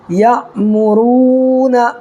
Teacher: یہ را کو پر کر کے پڑھنا ہے اس لیے را کے اوپر پیش ہے